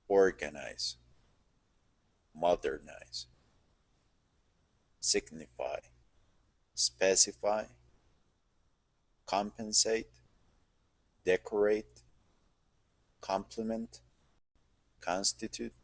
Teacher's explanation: three syllable verbs often have primary stress on the first syllable even if it is a prefix and secondary stress on the last syllable which is often a verb suffix organize modernize signify specify compensate